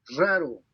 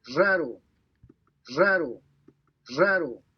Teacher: The first R in the word seems to be kind of normal, if you will, and the second R seems to be more of that vibration.